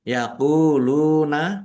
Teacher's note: wau sukun mad thobi'i lamdumah wawu sukun juga mad thobi'i dibaca panjang dua harakat